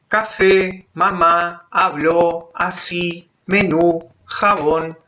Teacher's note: en la clasificación es la llamada son las llamadas agudas que son aquellas palabras que tienen la sílaba tónica al final es decir la última sílaba